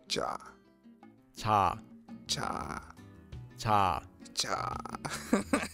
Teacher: similar to a CH or a j sound in English but it's not a hard CH sound like in the word cherry and it's not a hard J sound like in the word job it's between CH and J and is a bit softer